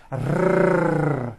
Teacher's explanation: the r is produced by bringing the tongue forward in the front of the mouth behind the upper teeth and rolling or trilling the tongue